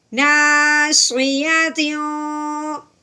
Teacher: यहाँ पे जब हमने तनवीन को देखा तो आगे देखा तो वो काफ था, काफ हरूफ अलकी में से नहीं है, तो तनवीन पे गुना करेंगे इख्फा का